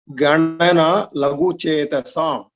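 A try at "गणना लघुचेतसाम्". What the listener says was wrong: Laghu Chetasam. Chetasam. Again, the takara you need to work on.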